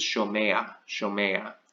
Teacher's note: the third guttural wants to be introduced by an A-class vowel